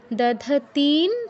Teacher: অনুস্বারের উচ্চারণে যাওয়ার আগে তি দীর্ঘ করে নিতে হবে, তারপর অনুস্বারের উচ্চারণ